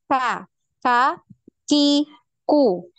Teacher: pangkal lidah kita ini atau lidah bagian paling belakang ini nempelnya di langit-langit antara bagian tulang yang lunak dengan tulang yang keras ya jadi di pertengahan pertengahan antara yang tulang yang lunak dengan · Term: huruf Kaf